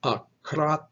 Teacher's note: accent mark that's the syllable that gets stressed so it is accra with a stress on that second syllable